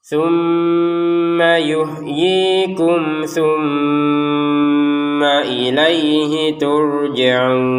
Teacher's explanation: Turjaun kita panjangkan enam harakat.